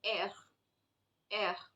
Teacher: from the back of your tongue so there is a little bit of vibration that you experience here it is as good as gargling imagine you gargle with water and you have that vibration over